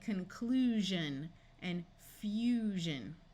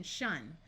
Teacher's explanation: If you have a root word that ends in a D or a Z sound, like conclude or fuse, remember it's about the sound, not the spelling, then the SION is going to have the jun sound, like conclusion and fusion, rather than shun